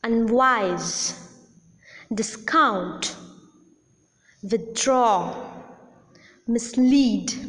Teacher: the prefixes are never accented the root syllable the root part is accented